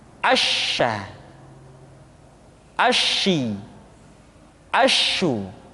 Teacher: Dan sifat yang dimiliki oleh huruf sya yang paling nampak adalah apa yang disebut dengan sifat attafasyi, yaitu menyebarnya angin di dalam mulut kita